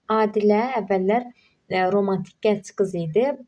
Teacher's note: Burda romantik vurğu sonda olmalıdır.